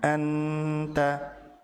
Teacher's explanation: Ujung lidah menekan. Ini termasuk izhar yang ditahan.